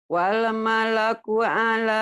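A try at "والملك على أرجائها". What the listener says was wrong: Jangan ada e-nya. Jangan wal. Wal Wal malaku ala arjaiha.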